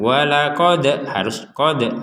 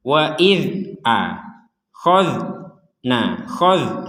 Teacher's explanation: Dzal sukun jangan sampai dipantulkan.